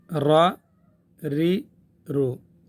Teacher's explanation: را ری رو. دال کے مخرج سے تھوڑا اندر کی طرف. را ری رو.